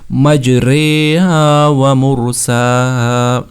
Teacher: مجرے پورا الف بھی نہیں پڑھنا، مجرا نہیں پڑھنا، مجری بھی نہیں پڑھنا، ان کے درمیان میں اس کو رکھنا ہے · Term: امالہ